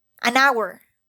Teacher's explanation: Hour, although is spelled with H, the H is not pronounced. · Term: silent H